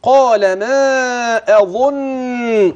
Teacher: وخلي بالك من الهمز تحقق والظاء المفخمه المضمومه